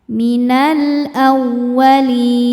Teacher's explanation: Minal a masuk ke wau tasdid tapi tidak didahului tanwin atau nun sukun maka jangan ditahan. Wau ini cukup dibaca dengan nabar. Kita naikkan intonasi suara kita.